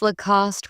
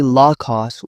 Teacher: Some pronounce Lacoste with stress on the last syllable. It's actually Lacoste with equal balance.